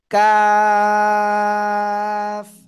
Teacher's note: just ক না হয়ে কা, চিকুন আওয়াজ হবে